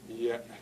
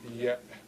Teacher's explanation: Glottal stop, E. Y, short E, glottal stop, short E.